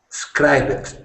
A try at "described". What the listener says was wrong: Described. We don't pronounce the ED on the end like you do in Spanish. It's described.